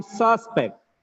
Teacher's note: Suspect, noun, sus is first syllable is stressed.